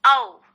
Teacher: तो औ का उच्चारण स्थान हो गया कंठ ओष्ठ, दोनों को मिला करके